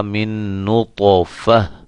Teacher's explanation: وقف کی حالت میں اس گول تا کو ختم کر کے ہا میں چینج کر دیں گے